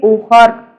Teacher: را اور خا دونوں کو موٹا کر کے پڑھیں گے